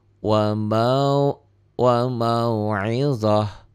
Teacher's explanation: Ta marbutoh ya, ta marbutoh bunyinya jadi ha